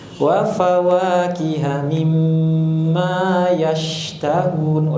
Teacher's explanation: Ada sifat tafasyi di sana. Udara tersebar dalam mulut ketika mengucapkan huruf shin.